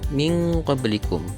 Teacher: ikhfa hakiki karena ada nun berharokat sukun bertemu dengan huruf qaf.